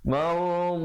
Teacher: Da 2 harakat, tillah. Baik, lafzul jalalah datang sebelumnya, baris bawah dibacakan nipis.